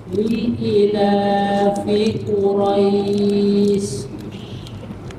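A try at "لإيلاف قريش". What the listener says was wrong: I-nya panjang, Pak. Ila.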